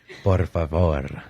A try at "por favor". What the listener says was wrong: you don't roll your R's in por favor. Yeah, they don't roll them. It's only certain words.